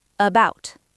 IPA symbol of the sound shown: ə